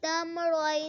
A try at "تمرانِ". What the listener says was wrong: تم کلکلا نہ ہو میم پر تم نہ بنے. تمرانی تمرائنی.